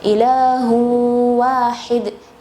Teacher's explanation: makhraj huruf ha yang berdekatan dengan atau sama dengan makhraj huruf hamzah, yaitu di bagian paling bawah tenggorokan, yaitu aqsa al-halq.